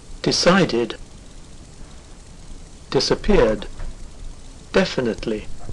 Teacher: far decided disappeared definitely all the same tone they're falling from a starting point to a lower pitch